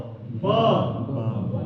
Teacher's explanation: व दो होता है, एक ऐसा वाला होता है और एक ऐसा वाला होता है। एक इसको ब, दोनों ओष्ठ से बोलना है